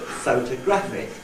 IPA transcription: ˈphotoˈgraphic